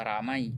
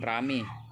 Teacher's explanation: perubahan dua bunyi vokal atau vokal rangkap, diftong menjadi vokal tunggal atau monoftong. Peristiwa penunggalan vokal ini banyak terjadi dalam bahasa Indonesia sebagai sikap pemudahan pengucapan terhadap bunyi-bunyi diftong. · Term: monoftongisasi